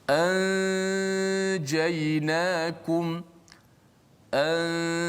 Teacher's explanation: Dia nun itu masih kekal di gunnah pada hidung. Adapun makhrajnya disembunyikan di sisi huruf jim.